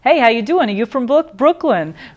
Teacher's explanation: THE ORAL POSTURE OF A NEW YORK SOUND IS VERY URBAN, AND SO THE LIP CORNERS ARE FORWARD